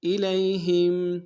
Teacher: یا لین بغیر کھینچے پڑیں گے · حمزہ کو میم کے سامنے لانا، میم ساکن غنہ نہیں ہوگا